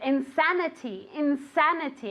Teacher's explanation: with the accent on the a